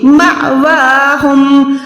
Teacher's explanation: اب یہاں پر نشانی ہے تو یہ ہو جائے گا مأواہم، الف پہ آپ نے یہاں پر جھٹکا لگانا ہے، اس حمزہ پہ آپ نے جھٹکا لگا کے پڑھنا ہے، میم الف زبر م، ٹھیک ہے، یہ ما نہیں ہے، مأواہم۔